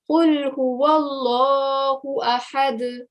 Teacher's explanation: make sure you don't stretch the sound out of Allah's name for too long because it's just got a vertical fatha on top. So only 2 second timing needs to be given.